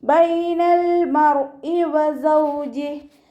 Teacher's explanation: അപ്പോൾ നമ്മളിവിടെ 2 കൗണ്ട് നീട്ടിക്കൊടുക്കുക കേട്ടോ. ലാം കൽക്കല ലെറ്റർ ഇല്ലാത്തത് കൊണ്ട് ഹാഫ് സുക്കൂന് കൊടുക്കുക. റോയിനും ഹാഫ് സുക്കൂന് കൊടുക്കുക. ബൈനൽ മർ ഇ എന്ന് പറഞ്ഞ് ഉച്ചരിക്കരുത്, ഫുൾ സുക്കൂന് കൊടുക്കരുത്.